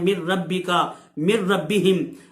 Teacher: لام اور را میں بغیر غنے کے ادغام ہوگا